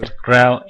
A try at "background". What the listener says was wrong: Now, be careful sometimes when you're speaking like background. Sometimes you're not pronouncing the D and other consonants at the end of a word. That is one of the first ways that you can make it difficult for native speakers to understand you. Now, it could be in your own language, you may not be pronouncing those final consonant sounds.